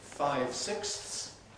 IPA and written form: ˈfaɪv ˈsɪksθs (five sixths)